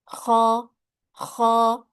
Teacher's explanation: Nah, kalau tadi huruf ghain itu dengan menggetarkan pita suara, kalau sekarang huruf kho adalah dengan mendorong udara dari dalam tenggorokan, ya, atau mengeluarkan suara ngorok sedikit. Maka huruf kho itu mengeluarkan angin, ya, karena huruf kho adalah huruf yang punya sifat hamas. Jadi harus keluar angin.